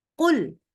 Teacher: Qul dari belakang enggak ada keluar udara sama sekali